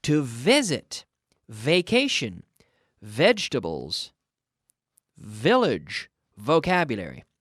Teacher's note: the V sounds like an F as in Foxtrot but with the vocal chords activated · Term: proper V